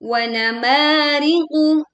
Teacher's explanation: Wamariqu ma dibaca panjang dua harakat.